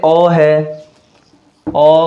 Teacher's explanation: ओ कहते हैं तो पूरा नहीं खुलता है, बल्कि क्या होता है, आधा खुलता है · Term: अर्ध विवृत